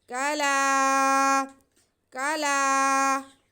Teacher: کاف پہ زبر، لام پہ بھی زبر اور ساتھ میں الف تو یہ الف مدہ ہو گیا۔ لام کے بعد ہم کھینچیں گے